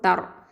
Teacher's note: அடுத்தது த ஃபத்தா ரா சுக்குன் தர். இந்த ரா சுக்குனை தஃஹீமாக உச்சரிக்கணும், தெளிவாக, அதாவது வல்லினமாக உச்சரிக்கணும்